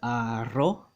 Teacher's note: don't forget the r makes that sound the trilling kind of the trilled and rolled r it's not like the american r where it's retroflex